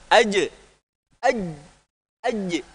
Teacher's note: Tengah-tengah lidah kita itu ketika huruf jim sukun dia menempel. Nah, udah tertahan dia.